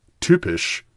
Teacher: vowel except in certain foreign words in those words like tupish it's pronounced like ooh but with very rounded lips